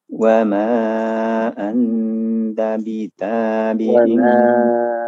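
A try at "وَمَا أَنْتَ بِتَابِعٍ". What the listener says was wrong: anta, agak panjang lagi.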